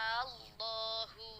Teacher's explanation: Cara bacanya dia ditekan ya. Idgham itu ada penekanan, tapi penekanannya tidak terlalu lama, jadi tidak ada dengung. Dia hanya ditekan. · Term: idgham syamsi